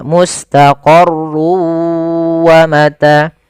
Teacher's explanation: masukkan tanwin ke huruf waw sehingga suara n-nya hilang. Tinggal ganti wa, maka mustaqarrun awalnya menjadi mustaqarru karena dia bertemu waw, masuk ke waw. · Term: idgham bi gunnah